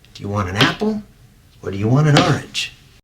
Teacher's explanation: the indefinite article is unstressed and very short however when these words are emphasized they take completely different forms